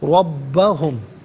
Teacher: ہے، یدعون، ربا علیحدہ ہم علیحدہ ملا کر پڑھیں گے ربہم، را پر زبر ہے، را کو پر کر کے پڑھیں گے ، با مشدد ہے، با کو جماؤ کے ساتھ پڑھیں گے